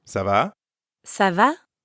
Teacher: make sure your voice rises a little at the end